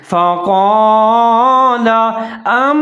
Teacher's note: فقال انبئونی، جہاں پر ہے فقال، فا کے اوپر زبر ہے، قاف زبر الف قاف کو موٹا پڑھنا ہے